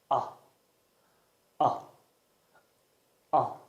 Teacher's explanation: put your tongue low and in the middle between the middle and the back of your mouth and make a short voiced sound with your mouth open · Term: open mid back unrounded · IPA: /ʌ/